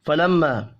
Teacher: فلما میم مشدد پر غنہ کریں گے